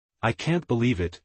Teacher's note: disappointment with a downward Trail